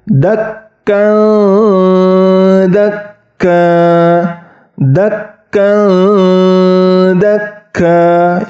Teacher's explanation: hilang kemudian diganti dengan huruf da masuk ke huruf da tetapi ujung lidahnya itu tidak mengenai pangkal gigi seri atas hanya mendekati contohnya dakkan Dakka dakakka ingat didengungkan dua atau tiga harakat kemudian